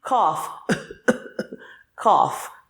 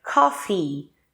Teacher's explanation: Então tem que ter o E. Esse som de I no final.